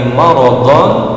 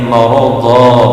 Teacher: ada tanwin yang disertai dengan alif pada waktu waqaf atau berhenti, maka bacaannya bukan lagi maradhan tapi maradha, menjadi mad iwab. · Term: mad iwad